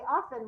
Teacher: we often say often without that t sound